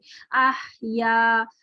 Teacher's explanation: जैसे अगर आप सिर्फ साकिन हा की बात करें तो इसमें सिर्फ हम्स ही हम्स होगा, उसी की आवाज आप महसूस करेंगे।